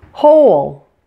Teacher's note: a one syllable word like hole actually sounds like two syllables this is referred to as a syllabic consonant in this case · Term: syllabic L